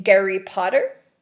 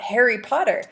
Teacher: the aspirated H sound H H is transliterated to be a g sound